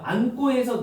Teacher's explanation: 니은이 기억을 만나서 쌍기억 꼬로 바뀌어 있죠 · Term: 된소리